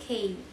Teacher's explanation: velar tongue touching the velum